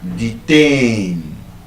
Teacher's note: It's a verb and it is stressed on the second syllable.